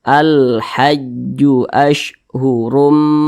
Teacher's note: jadi huruf lamnya itu terbaca dengan jelas.